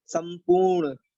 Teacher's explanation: ये मूर्धन ना है, इसको मूर्धन के सहारे बोला जाता है।